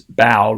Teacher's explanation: bowed with the ah at the beginning of that diphthong ow